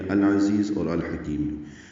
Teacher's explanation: عین وسط حلق سے ادا ہوگا